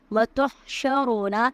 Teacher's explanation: وتحشرون کی جو ہاں ہے اس کی آواز حلق سے ادا ہوگی، را پر پڑھا جائے گا۔